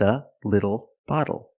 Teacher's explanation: e phonetically the t is between vowels and for this reason the T changes to a fast D in American pronunciation